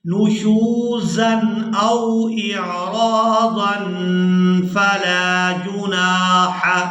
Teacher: تنوین میں جو نون کی آواز ہے اس کو ہم نے چھپا کر ادا کرنا ہے، یعنی یہاں پر اخفا کریں گے.